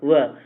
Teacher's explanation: वह व बोलने में ऊपर के होठ की आवश्यकता ही नहीं है